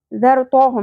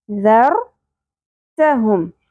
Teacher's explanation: رو کو پر کرتے کرتے تا پر نہیں ہو، ذر تو ہم نہیں پڑھنا، ذر تہم.